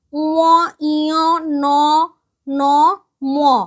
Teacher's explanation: শ্বাসবায়ু মুখ দিয়ে বেরোনোর পাশাপাশি নাক দিয়েও বেরোচ্ছে। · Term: নাসিক্য ধ্বনি